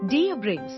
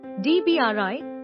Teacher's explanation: the S at the end is silent and the stress is on the second syllable